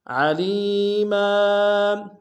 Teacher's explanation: وَكَفَى بِاللَّهِ عَلِيمًا، علیم میں لام کو یا کے سامنے آئیں گے، یا مدہ ایک امتداد میں کھینچیں گے، میم کے اوپر تنوین غنہ کریں گے، وقف میں تنوین کو الف سے بدلیں گے